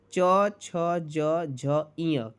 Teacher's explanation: च, छ, ज, झ, ञ किससे होता है? तालु से होता है